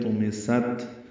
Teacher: طُمِسَتْ طا پر پڑھیں گے، سین تا دونوں باریک ہے، طُمِسَتْ تا ساکن ہے اور اس پہ ہمس ہوگا، ہلکی سی سانس کی آواز جاری رہے گی